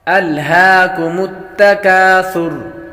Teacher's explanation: الہاکم التکاثر، سا ہے، سا کو ہمیشہ نرمی کے ساتھ پڑھا جاتا ہے، یہاں پر سیٹی کی آواز نہیں آئے گی۔